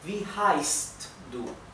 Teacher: La SZ se pronuncia como una S suave, ¿bien? Y también la SZ indica que la vocal anterior se pronuncia un poco más larga, así que es wie heißt du, ¿bien?